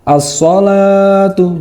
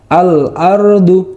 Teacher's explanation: Jika asyamsiyah bacanya asalatu jadi samar-samar. Sedangkan alqamariyah dibacanya sangat jelas.